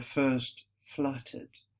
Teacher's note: We have the very, very gentle fricatives.